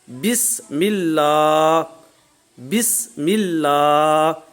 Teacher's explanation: کھڑی زبر ہے، اس کو کھڑی حرکت بھی کہتے ہیں، اس کو ایک الف کی مقدار دراز کریں گے۔ یہ عام قاعدہ ہے کھڑی حرکات کا، اور اس کا اندازہ بند انگلی کو درمیانی حالت میں کھولنے سے لگایا جاتا ہے۔